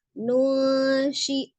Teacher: hukumnya adalah ikhfa ya, dibaca samar tetapi sama dengan ditahan 2 sampai 3 harokat, dibaca dengan samar mendekati huruf sesudah nun sukunnya